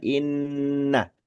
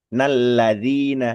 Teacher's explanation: Nun tasdidnya pasti dipastikan lebih lama daripada lam tasdid